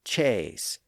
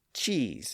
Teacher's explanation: people started to raise the front of their tongues a bit when they pronounced those words. And in the process, the sound shifted from a up to e. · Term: great vowel shift